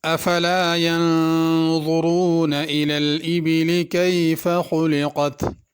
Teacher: ینظرون کے نون پہ غنہ کرنا ہے، جلدی سے ینظرون نہیں پڑھنا۔